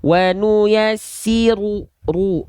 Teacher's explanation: ketika teman-teman melafalkan huruf ro berharokat dhammah, maka pastikan dia muncung dan dibaca dengan keadaan yang tebal. Bukan dibaca cuma sekedar wa nuyassiru.